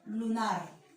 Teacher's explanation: la sílaba nar vendría a ser la sílaba tónica